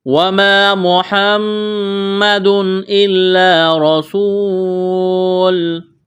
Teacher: وما الف مدہ ہے، ایک الف کے برابر کھینچنا ہے۔ محمد میم مشدد ہے، آواز ناک میں چھپائیں گے، غنہ کریں گے۔ تنوین کے بعد حروف حلقی میں سے حمزہ ہے تو تنوین پر غنہ نہیں کریں گے، آواز ناک میں نہیں چھپائیں گے، اظہار کریں گے یہاں پر۔